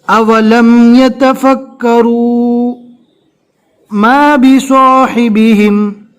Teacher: ہم نے یہاں پر سانس کو نہیں توڑا، صرف آواز کو بند کیا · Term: سکتہ